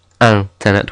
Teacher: although we have an i n we're not saying Internet it's anet with a very nasal n a an makes an o sound like an again very nasal